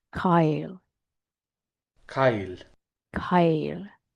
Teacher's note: And because it's got a what they call a narrow vowel, an I or an E before the final consonant, we're getting a little bit of um that Y sound after the consonant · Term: palletization